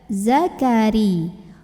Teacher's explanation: Ra-nya dibunyikan secara tarqiq karena barisnya kasrah ya. Jadi tipis ya, pangkal lidah tidak perlu dinaikkan.